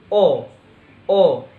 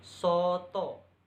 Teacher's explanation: Vokal belakang tengah bundar